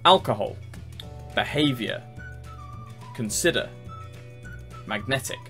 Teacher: Alcohol, first syllable. Behavior, second syllable. Consider, second syllable. Magnetic, second syllable.